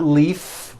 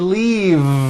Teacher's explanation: leaf with an unvoiced F I should have said leave with a voiced V sound faisa